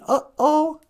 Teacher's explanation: that little apostrophe it's like that glottal stop